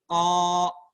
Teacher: Udara tertahan, nggak bisa keluar. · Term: huruf qaf